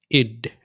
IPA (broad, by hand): ɪd